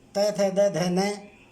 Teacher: जिह्वा दांतों का स्पर्श करती है